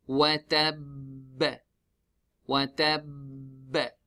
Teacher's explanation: there is a shadda at the ba. So we pause and then do the qalqala.